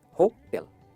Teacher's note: जैसे टेल बोलते हैं ना, टेल, होटल, होटल, राइट? जो टेल है ना उस पर स्ट्रेस करना है